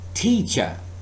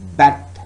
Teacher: if I use this T sound in the word teacher, teacher, you can produce this sound and say teacher. There is plosiveness. But when I say bat, there is not that plosiveness.